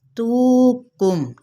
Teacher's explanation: بڑی آرام کے ساتھ واو مدہ کرتے ہوئے 1 الف یا 2 حرکات کے برابر کھینچیں گے